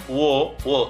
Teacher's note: ತುಟಿ ಎರಡನ್ನು ಕೂಡ ನಾವು ಮಡಿಸುತ್ತೇವೆ ಆಗ ಕಂಠದಿಂದ ಬರ್ತಕ್ಕಂತಹ ಧ್ವನಿ ಹೊರಬಂದಾಗ ಈ ಅಕ್ಷರಗಳು ಹುಟ್ಟುತ್ತೆ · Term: ಕಂಠೋಷ್ಟ